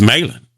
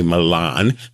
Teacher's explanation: We don't lift our tongue to say Milan. It's Malin. Our tongue stays flat.